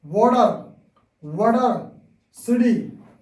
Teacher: flap T sound sound like d